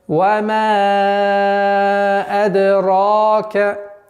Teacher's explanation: Ра твердый, и после удлинения удлиняется в размере 2 огласовок, получается вама адрака.